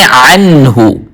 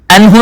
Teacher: عین کو وسط حلق سے ادا کرنا ہے, حلق کے درمیانی حصے سے, گلے کے درمیانی حصے سے